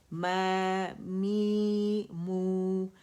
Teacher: ماں نہیں بولیں گے، اسے ناک میں آواز نہیں جائے گی، موٹا بھی نہیں کریں گے